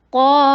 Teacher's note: فتحہ کے لیے جبڑے کو کھولیے قوف کو ہیوی کرنا ہے